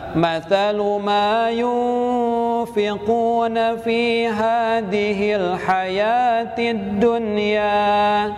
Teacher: Huruf nun yang disukun harus disamarkan mendekati huruf fa. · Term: ikhfa